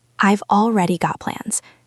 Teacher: Notice how the stress is on already.